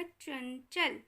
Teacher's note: यहाँ पर न्या का उच्चारण आ रहा है